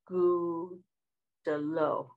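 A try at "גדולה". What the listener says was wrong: Gudalo. Good job.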